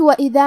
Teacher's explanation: حرف الذال کی ادائیگی زبان کے سر اور اوپر والے دانتوں کے اندرونی کناروں سے ہے